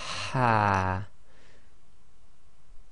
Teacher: this Ha is what we call the forceful Ha, because you're exhaling a bit more forcefully and that air is being pushed out from the middle of your throat